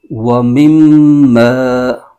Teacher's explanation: میم مشدد ہے اور میم مشدد میں ہمیشہ غنہ ہوتا ہے